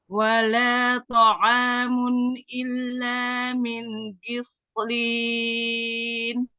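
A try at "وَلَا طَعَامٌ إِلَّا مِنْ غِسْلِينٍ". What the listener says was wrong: Hati-hati ghoinnya ditampakkan. Di sini ya. Jadi sinnya tidak ikut menebal, tidak ghis ya, tapi min ghislin.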